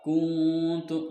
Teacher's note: Kuntu ada ikhfa hakiki sebab nun sukun bertemu dengan huruf ta